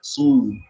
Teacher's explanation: Jadi huruf sodnya itu lebih tebal dari si ha.